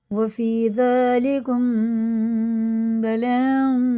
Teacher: مد متصل ہے 4 الف کا کھینچ کے پڑھیں گے اور میم میں بھی غنہ کر کے پڑھیں گے کیونکہ تنوین